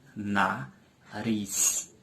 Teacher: Riz é a sílaba mais forte da palavra e é a última sílaba também. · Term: oxítona